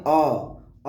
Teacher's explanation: अ जब हम बोलते हैं तो हमारी जीभ बिल्कुल मध्य में रुकी रहती है। आप बोल के देखिए अ जब हम बोलते हैं तो पूरी हमारी जीभ मध्य में हमारे रुकी रहती है, तो इस वजह से इन्हें मध्य स्वर कहते हैं।